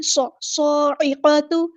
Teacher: صاد جو ہے یہاں پر اس میں سٹی لے کر آنی ہے